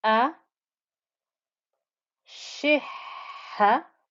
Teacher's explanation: the double ha gave me all that breathy noise that comes through while I'm pronouncing the double ha